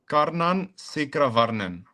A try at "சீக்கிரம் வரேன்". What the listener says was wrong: Not Varnen, Varen.